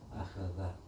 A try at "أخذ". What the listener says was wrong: But now you say أخذ. So I can't hear the alif and the dal, they all sound jumbled up. So it's supposed to be أخذ. أخذ. أخذ. The one in between is only heavy, the two not heavy. أخذ. And you see your tongue. أخذ.